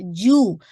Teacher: جو میں آپ کی ایئر باہر نہیں آنی چاہیے